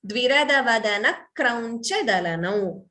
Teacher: please note the dvitvam. Second k is heard.